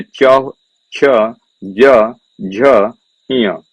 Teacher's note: चा वर्ग का उच्चारण स्थान होगा तालु।